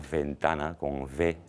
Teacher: aquí no tenemos ningún fonema labio dental de ese tipo sonoro